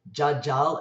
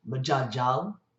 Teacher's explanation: the last consonant of the first syllable is not pronounced, so it's jajal, and you hear that as majajal.